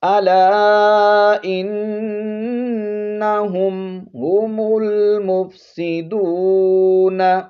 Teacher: یہاں پر میم ساکن ہے تو اس کو ظاہر کر کے پڑھیں گے کیونکہ آگے جو ہے ہا ہے، تو اگر با ہو یا کوئی اور ہو تو پھر میم پر غنہ کرتے ہیں، تو یہاں میم پر غنہ نہیں کرنا بلکہ میم کو ظاہر کرنا ہے.